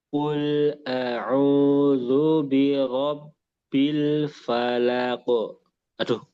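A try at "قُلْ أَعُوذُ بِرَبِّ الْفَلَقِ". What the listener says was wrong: Tinggal dikurangi sedikit ya. Terus domanya disempurnakan di zal ini. Zu, zu ke u. Zu.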